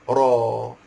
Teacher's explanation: ra itu berbaris fathah, maka ra itu tebal, iaitu tafkhim, tebal, muncul mulut